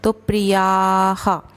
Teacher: या के बाद जो विसर्ग है उसको हम हा ही बोलेंगे, ह नहीं बोलेंगे क्योंकि आ की मात्रा है या में